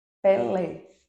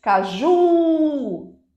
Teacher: Uma sílaba mais forte como é o caso de pele Pelé na última sílaba mais forte né a gente segura por mais tempo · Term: oxítona